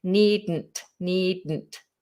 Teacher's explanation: The explosion is kind of pushed up.